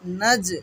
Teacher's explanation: নাজ এখানে কলকলা হবে, জিমে সাকিন হচ্ছে যেহেতু সেই কারণে